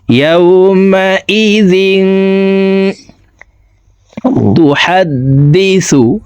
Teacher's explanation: জিন এখানে ইকফা গুন্না, তানউইনের পরে ইকফার 15টি হরফের ভিতরে একটি হরফ তা আসছে, এই কারণে এই তানউইনওয়ালা জালটি অর্থাৎ দুই জেরওয়ালা জালটি নাকের ভিতরে লুকাইয়া গুন্নার সহিত পড়ব